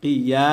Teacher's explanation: ইয়ার উপরে খারা জবর আসার কারণে এক আলিফ টান হবে মাদ্দে তবাই আর মাদ্দে তবাই কত আলিফ টানে পড়তে হয় এক